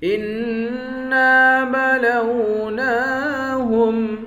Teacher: انا کو نون مشدد کے ساتھ ملا کر غنہ کریں گے، انا کو ایک الف کے مقدار کھینچ کر بھی پڑھیں گے، نون پر کھڑا زبر ہے، اس کو بھی ایک الف کے مقدار کھینچ کر پڑھیں گے۔